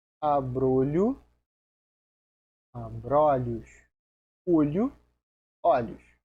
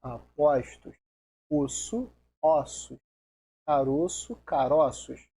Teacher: mudam o timbre da vogal tônica de O para O. O fechado para O aberto. Vai ser feito o plural normal, só que no singular, esse O ele vai ser fechado. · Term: plural metafônico